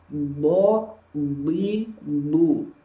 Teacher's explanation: Hanya mengalirnya huruf dot tidak seperti huruf sin. Mengalirnya huruf dot ini dia tidak bisa panjang. Jadi mengalir tapi singkat. Maka ketika diucapkan harus ada sifat rokhwahnya walaupun singkat.